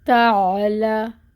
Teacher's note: یہ باریک تا، فتحہ کی حرکت 1 کاؤنٹ، آئین وسط حلق سے، لام پہ فتحہ ہے، 1 حرکت پڑھیں گے لا کو۔